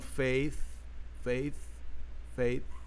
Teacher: Existem pessoas que falam faith, faith, faith, como se a língua tocando nos dentes superiores e saindo um S